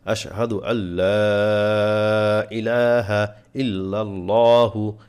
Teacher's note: লাতে তিন আলিফ টান এখানে চিহ্নটা দেয়া নাই তিন ইলিফ টান হবে আশহাদু আল্লা লা